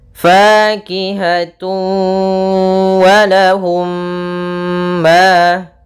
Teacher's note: Maka ini kita namakan dengan idgham bighunah. Yaitu cara membacanya masukkan suara tanwinnya kepada huruf wau dan ditahan dengan gunah. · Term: idgham bi gunnah